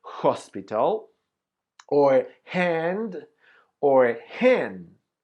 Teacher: So the sound of the H is the sound of the J Latina. We say when you make the sound of the H, your vocal cords don't vibrate.